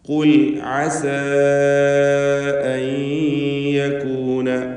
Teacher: അസ എന്നതിലെ അലിഫിനെ മദ് മുൻഫസിൽ ജായിസ് നൽകി 4-5 ഹറക്കത്തിൻ്റെ അളവിൽ ദീർഘിപ്പിക്കണം.